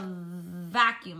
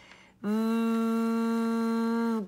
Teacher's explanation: now we have another letter that's a lip biter just like F